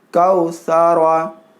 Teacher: را کو موٹا پڑھنا ہے، را کے اوپر زبر یا پیش ہو تو را کو موٹا پڑھنا ہے